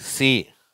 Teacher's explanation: இந்த ஒலியை எழுப்பும்போது எந்த அதிர்வும் ஏற்படுவதில்லை. இது 's', மற்றும் 'see' என்பது ஓர் உதாரணச் சொல்.